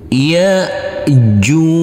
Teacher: Jim ini boleh dibaca panjang dengan du empat maupun enam harakat karena kita wakafkan di sini kita berhenti di sini maka huruf Jim wajib kita pantulkan karena ini adalah bacaan Qalqalah